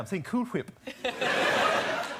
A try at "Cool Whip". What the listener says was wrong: You're putting a lot of emphasis on the H. Say cool. Say whip.